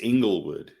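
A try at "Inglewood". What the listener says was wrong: Oh, Ingles, not Engle.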